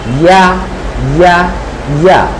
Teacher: জিহ্বার মধ্যখান উপরে তালুর সাথে আমাদেরকে উচ্চারণ করতে হবে ইয়া